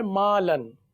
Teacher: الف سے پہلے میم باریک ہے اس لیے الف کو بھی باریک پڑھیں گے